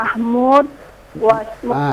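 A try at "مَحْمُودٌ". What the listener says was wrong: Hidupkan dalnya. Hidupkan dalnya. Mahmu, teruskan.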